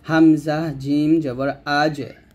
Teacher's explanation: তার মধ্যে জিমটা কলকলা হবে